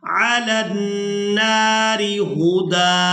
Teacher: اب یہاں پر اکثر لوگ وقف کرتے ہوئے غلطی کر جاتے ہیں کہ اس دال کو ساکن کر دیتے ہیں، تو یہاں پر ہم نے دال کو ساکن نہیں کرنا بلکہ دال پر ایک زبر ادا کریں گے اور اس دال کو ایک الف مقدار کھینچ کر ادا کریں گے وقف کی صورت میں